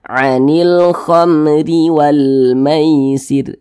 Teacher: Huruf ra yang memiliki tanda baca kasrah, maka huruf ra itu dibaca tipis, dibaca tarkik, sehingga pangkalisan kita itu tidak naik terangkat ke atas, ditipiskan huruf ra-nya.